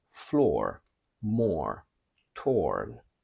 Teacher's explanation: even American keeps the long British or when it's followed by a r sound